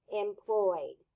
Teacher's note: the e d is saying D because the Y is voiced y y y your vocal chords are vibrating so that's why